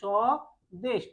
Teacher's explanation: সময় করছি কি সদেশ অর্থাৎ এখানে ব এর কোন অস্তিত্ব নেই উচ্চারণ করার সময় ব এর কোন অস্তিত্ব নেই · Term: ব ফলা